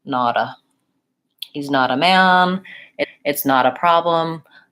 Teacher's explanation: uh and then we just link nada not a man and the T becomes more of a flap T which sounds a little bit like a D